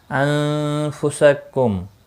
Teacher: ولا الف مدہ ہے، ایک الف کے برابر کھینچ کر پڑھیں گے، خا مستعلیہ ہے پر پڑھا جائے گا، را زیر کی وجہ سے باریک ہوگا، جو واو مدہ ہے، ایک الف کے برابر کھینچ کر پڑھیں گے۔ انفسکم، نون ساکن کے بعد فا آیا ہے، اخفاء حقیقی ہوگا